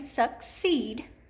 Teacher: say that word with my hand under my chin suck ceed I know that this is accented in the second syllable so suckseed it's the double e pattern and if accented syllable